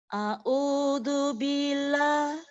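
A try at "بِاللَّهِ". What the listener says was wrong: Nggak boleh panjang Ustazah. Billahi. Ba-nya yang nggak boleh panjang. Ba-nya dimasukkan ke huruf lam. Billahi. Tapi panjangnya di lam yang kedua. Billahi.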